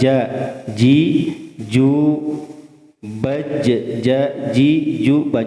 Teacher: Jami'a ja ji ju baj ja ji ju baj itu pertengahan lidah ya. Wasatul lisan di tengah-tengah lidah. Dimantapkan dengan langit-langit atas. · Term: jim